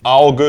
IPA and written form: ˈaʊ̯.ɡə (Auge)